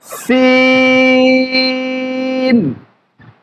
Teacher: সিন হরফটা পাতলা হবে এবং বাতাস জারি থাকবে। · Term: হামসের হরফ